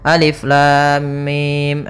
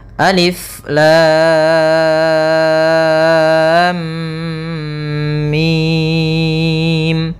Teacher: lamnya kita panjangkan enam harakat dulu baru ditahan mimnya sebanyak dua harakat karena di sini ada mim ketemu mim kemudian baru mim nah